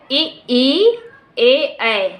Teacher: देखिए हमारे टंक का आगे वाला भाग सक्रिय हो रहा है, क्रियाशील हो रहा है, इसलिए इसको अग्र स्वर के अंतर्गत रखा गया है।